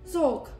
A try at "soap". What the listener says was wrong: Soap. You gotta add the P at the end.